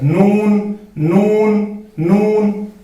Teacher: नून जो है जुबान का जो किनारा है उसको हमें अनियाब के साथ मिलाना है